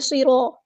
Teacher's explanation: صاد میں حروف صفیریہ میں سے تو سیٹی آئے گی